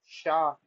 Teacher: इसको बोलते हैं मूर्धन्य शकार। जहां से ट, ठ, ड, ड का उच्चारण होता है, वहीं से इसका उच्चारण।